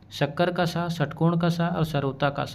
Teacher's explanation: शक्कर का स षट्कोण का स और सरोता का स ये तीनों ही अघोष वर्ण है।